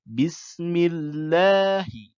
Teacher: lam jalalah dibaca ringan Apabila harakat huruf sebelumnya berupa kasrah